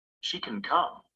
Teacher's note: when it comes before another word in the same clause can is usually unstressed and the vowel is reduced the pronunciation is short and weak